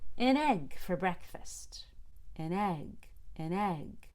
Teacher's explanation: notice how the ends go up up up but the e is higher the e is the highest pitch